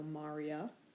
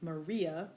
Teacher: the nominative plural there's an eye before the a so Marya with the accent on the third to last syllable as opposed to the name Maria which has the accent on the second to last syllable